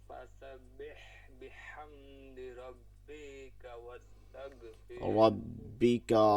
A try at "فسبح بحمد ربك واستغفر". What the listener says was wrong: ربك টান হবে না ঠিক আছে ربك فسبح بحمد ربك واستغفر